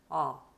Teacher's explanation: 독일어의 아는 어떻게 되냐면 입을 더 크게 벌리고 더 목구멍 깊숙한 곳에서 소리를 낸다고 생각을 하세요. 아, 약간 하품할 때처럼 아, 네, 이렇게 소리를 내시면 됩니다.